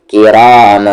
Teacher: अब देखिए यहाँ पर तनवीन है, तनवीन के बाद काफ आ रहा है और काफ हुरूफे इख्फा है तो मन तो होगा नहीं, म होगा